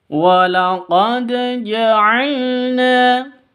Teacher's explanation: dal sukun qalqalah ada di tengah, qalqalah sughra, dipantulkan ya kalau qalqalah.